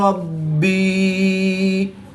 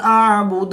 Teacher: با اور دال حروف قلقلہ میں سے ہیں. با مشدد ہے تو یہاں پر قلقلہ کبریٰ کریں گے اور دال ساکن ہے تو یہاں پر قلقلہ صغریٰ کر کے پڑھیں گے.